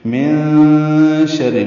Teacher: نون کی آواز کو چھپائیں گے، یہ چھپانا دراصل اخفا ہے۔ من شر، شین میں تفشی پائی جاتی ہے، آواز منہ میں پھیلتی ہے، را سے ملائیں گے، را کے نیچے زیر ہے، را باریک پڑھیں گے۔